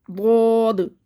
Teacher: ساکن یہ آخر میں، تو اس میں قلقلہ ہوگا، یعنی کہ آواز پلٹ کے واپس آئے گی